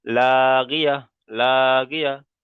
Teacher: তাটাকে বাদ দিয়ে হা সাকিন করে তার আগের অক্ষরের সাথে মিলিয়ে পড়তে হবে, যেমন লাগিয়া, লাগিয়া। তাহলে এখানে লাগিয়াতান পড়া যাবে না আর।